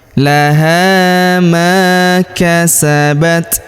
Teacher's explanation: Kemudian laha huruf ha kita panjangkan dua harakat karena terdapat alif di depannya. Ma huruf ma kita panjangkan dua harakat karena terdapat alif di depannya.